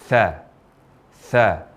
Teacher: Huruf tha kita ucapkan dengan mempertemukan antara ujung lidah dengan ujung dua gigi seri atas. Tha, tha. Dan ketika mengucapkan huruf tha ini disertai dengan aliran nafas.